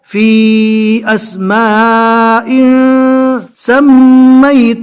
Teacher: قد وقع عليكم من ربكم رجس وغضب اتجادلونني في اسماء، دو زیر کی تنوین ہے، اس کے بعد اکفا کے 15 حروف میں سے آگے سین آ رہا ہے، لہٰذا اکفا کر کے یعنی تنوین کو ناک میں چھپا کر پڑھنا ہے